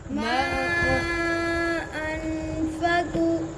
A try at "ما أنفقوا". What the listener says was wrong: वाव को लंबा करें जी फिर बढ़े